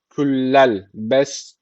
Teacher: ka harfi cezm almış. Burada ne var? Kalkale var. Birazcık vurguluyoruz.